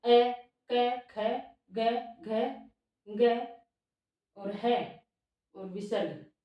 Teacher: ये सारे वर्ण है वो कंठ से बोले जाते हैं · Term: कंठ्य वर्ण